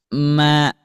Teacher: gunnah anqos, gunnah yang paling kurang dengungannya. Ketika kita tutup, pasti awalnya itu suaranya tidak akan keluar.